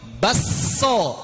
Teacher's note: Bakso jadi basso, pakai idgham. Kafnya idgham ke sin.